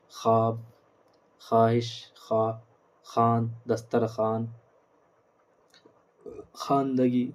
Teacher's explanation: واو معدولہ وہ واو ہے جو لکھا جائے مگر پڑھا نہ جائے